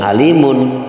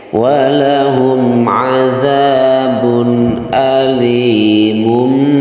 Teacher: Itu supaya mudah untuk dibaca bahwa tanwin di situ ketika bertemu dengan huruf ba maka berubah tanwinnya itu yang tadinya punya nun ya berubah menjadi huruf mim. Jadi cara membacanya walahum azabun alimum bima ya bukan alimun tapi walahum azabun alimum ya. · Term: iqlab